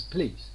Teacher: There is a certain schwa following p, but it is omitted in colloquial speech. It becomes please. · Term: elision